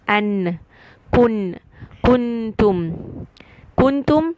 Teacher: an means I'm using the Mak of noon it is isar it is saying the noon clearly I'm not hiding the sound a and N I can hear the sound of noon clearly · I am touching the makhraj of noon, which is tip of the tongue above behind the teeth on the gums. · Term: izhar